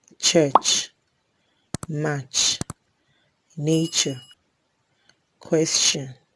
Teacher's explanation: Ch is a voiceless post-alveolar affricate